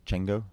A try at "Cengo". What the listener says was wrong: nope it's a Zulu name ah you've got to do a click